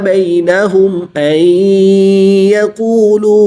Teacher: मीम साकिन के बाद हर्फ बा और मीम के अलावा हर्फ हमजा है तो यहाँ पर इज़हार शफ़वी होगा। मीम साकिन को ज़ाहिर करके पढ़ेंगे, गुन्ना नहीं करेंगे।